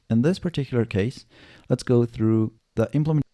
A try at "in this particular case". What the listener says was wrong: Yeah, so like overall pronunciation is amazing.